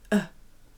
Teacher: my mouth is round, and my mouth is open, and the tongue, it's right behind my lower teeth, so it's right behind there, and how to make the long sound, it's kind of similar, the mouth is still round, open, and the tongue is in the front, right behind the lower teeth. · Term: short Ö